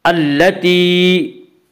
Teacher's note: التی، یا مدہ، یا مدہ وہ یا جو ساکن ہو اس سے پہلے زیر ہو، یا مدہ کو ایک الف کی مقدار کھینچ کر پڑھتے ہیں